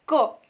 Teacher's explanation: the back of the tongue touches to the soft palate is called velo